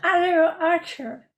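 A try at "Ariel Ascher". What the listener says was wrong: Asher. No, no, it's Asher. Some people say Archer, and it really ticks me off, because it's not an R, it's an S, my friend. It's an Asher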